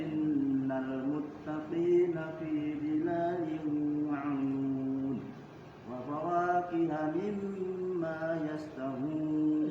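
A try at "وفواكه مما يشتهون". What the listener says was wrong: Jadi jangan juga lupa makhrajnya. Yash. Fi jangan pi. Jangan juga lupa makhrajnya.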